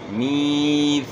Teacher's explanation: زبان کی نوک سامنے والے اوپر کے دو دانت ثنائے اولیہ کے اندرونی کناروں کے ساتھ زبان کی نوک لگے گی، ثا آپ نے پڑھنا ہے۔ میثاقکم میم کی زیر کو آپ نے کھینچنا ہے تو یا پڑھی جائے گی، ثا کی زبر کو آپ نے کھینچنا ہے تو الف پڑھا جائے گا، میثاقکم۔ · میثاقکم میم کی زیر کو آپ نے کھینچنا ہے تو یا پڑھی جائے گی، ثا کی زبر کو آپ نے کھینچنا ہے تو الف پڑھا جائے گا، میثاقکم۔ قاف جو ہے موٹے حروف میں سے قاف کو آپ نے موٹا پڑھنا ہے، اور پیش کو معروف ادا کرنا ہے، میم میں اظہار ہوگا، غنہ نہیں ہوگا۔